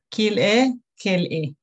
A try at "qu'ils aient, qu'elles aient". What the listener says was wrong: Et oui, en effet, avec la liaison, qu'ils aient, qu'elles aient, Et au niveau de la prononciation, on va tout simplement prononcer et.